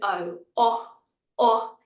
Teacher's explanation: we want a nice popping open o o o not ah